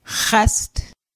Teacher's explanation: X wedge pronounced as a guttural H deep in the back of the throat